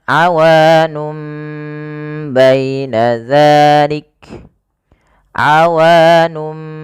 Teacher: nun diganti dengan mim karena dia bacaan iklab, yaitu nunnya bertemu dengan huruf ba. Awalnya awanun menjadi awanum, maka di sini mim itu dianggap mati saja sehingga bunyi awanum.